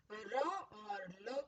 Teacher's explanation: दांत के ऊपरी हिस्से, जहां दंत मूल है, जहां दांत मसूड़े से जुड़े हुए हैं, उन जगहों को जिह्वा टच करती है, इसलिए इन्हें दंत मूल कहते हैं।